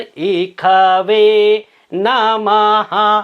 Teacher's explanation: जो मूर्धन्य श होता है इसका उच्चारण अनेक स्थानों पर ख किया जाता है